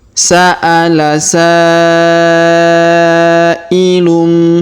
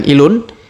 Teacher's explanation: Kemudian tanwin un bertemu ba atau bi di sini dengan tanda mim kecil ya. Maka tanwin unnya melebur masuk ke huruf bi. Kemudian tanwin unnya berubah menjadi mim ya.